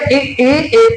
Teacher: अग्र स्वर जीव का अगला हिस्सा आपके निचले तालू से या दांतों से टकराएगा